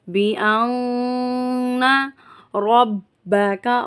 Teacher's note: یہاں پر نون مشدد پر ہم غنہ کریں گے